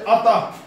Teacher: विसर्ग, अंत में अह उसका उच्चारण होता है